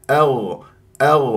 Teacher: الغين من احرف الاستعلاء وهنا مفخمه مرتبه رابعه ويجري فيها الصوت فقط